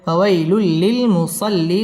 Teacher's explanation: বাম পাশে জজম আলাইয়া লিনের হরফ তাড়াতাড়ি পড়তে হবে ফাওয়াইলুল লি ইদগামে বেলা গুন্না ছাড়া মিলিয়ে পড়তে হবে